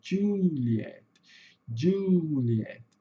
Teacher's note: o som de J em inglês vai ter som de DJ